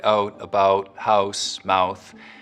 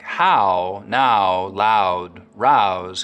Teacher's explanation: raising the start of the diphthong in words like out and about so that instead of it starting very open ow it's starting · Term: canadian raising